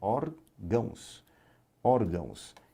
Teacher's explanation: A sílaba tônica é a penúltima, é uma paroxítona terminada em ditongo, seguido de S